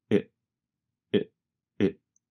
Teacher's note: The letter T in what changes to a sound closer to the letter D. And the word it goes by so fast that it becomes very reduced to just a vowel sound plus a very fast held T.